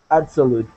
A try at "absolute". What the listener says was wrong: Perfect. Okay, good.